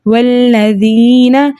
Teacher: والذین، ایک اور چیز کا خیال رکھنا ہے کہ یہ ذال ہے، اس کو زال کے ہی مخرج سے ادا کیا جائے، زا نہیں ہے، زا نہیں پڑھنا، والذین نہیں ہے، یہ لفظ ہے والذین باریک پڑھنا ہے ہم نے زال کو